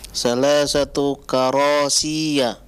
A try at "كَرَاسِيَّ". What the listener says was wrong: ya-nya jangan ditahan lama-lama. Karasiyah.